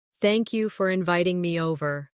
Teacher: Notice how inviting me over flows as one smooth phrase.